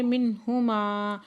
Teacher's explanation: نون ساکن کے بعد ہا ہے حروف حلقی میں سے تو یہاں پہ اظہار کریں گے